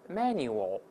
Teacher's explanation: 后面还有个▁l▁的声音，就舌头尖再稍起抬，稍微抬起来点